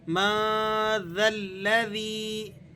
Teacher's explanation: نون پر آپ نے اخفا ادا کرنا ہے، یعنی آواز کو ناک میں لے کر جائیں گے. من ذا الذی، ذال کو لام سے ملا دینا ہے، اور یہ جو دو الف بیچ میں آپ کو نظر آ رہے ہیں یہ دونوں آپ نے سائلنٹ کر دینے ہیں.